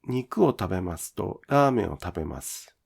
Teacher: The pitch of ta in tabemasu is lowered.